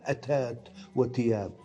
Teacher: والتاء تحتل مكان الثاء في بعض مدن بلاد الشام